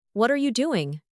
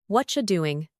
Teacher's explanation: But in natural English, what are you becomes whatcha? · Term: connected speech